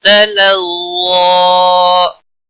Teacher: ज़ा के ऊपर खड़ी ज़बर है एक अलिफ के बराबर खींच कर पढ़ेंगे वक़फ़ की सूरत में भी